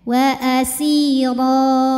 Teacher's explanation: cara bacanya panjang dua harakat tanpa bunyi N · Cara bacanya ditebalkan. Ro apabila berhenti hukumnya mad iwad, karena ada harokat tanwin fathah yang kita wakafkan. Cara bacanya panjang 2 harokat tanpa bunyi n.